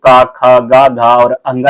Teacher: क वर्ग के जितने भी वर्ण है ये कंठ ध्वनियां से उच्चारित होंगे